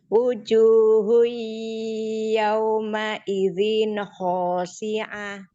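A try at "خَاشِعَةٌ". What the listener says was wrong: Khoshi. Khoshi. Ko-nya kurang tipis sedikit. Shi-nya kurang tafasi sedikit. Khoshi. Khoshi.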